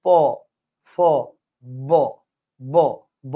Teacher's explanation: ঠোটের মধ্যে এখানে বাতাসটা এসে জমাট বদ্ধ হয়ে পরে ধুম করে বের হয়ে যায়।